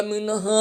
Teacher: मिन हा की अदायगी सीने से होगी